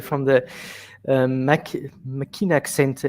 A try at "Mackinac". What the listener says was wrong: And that one, the C is silent. It's a Michigan thing. It's Mackinac.